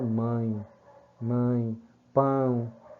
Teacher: passa aí ter o valor de vogal átona vogal fraca certo então seria um ditongo nasal decrescente · o E, em geral, ele é uma vogal, mas aí ele perdeu força e assumiu a sonoridade, o fonema de I. Então ele passa aí ter o valor de vogal átona, vogal fraca, certo?